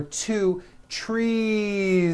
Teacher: It's not trees with an unvoiced S. It's trees with that voiced ending.